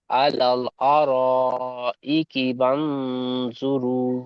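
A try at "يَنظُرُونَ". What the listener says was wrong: বান নয়, ইয়ানজুরুন।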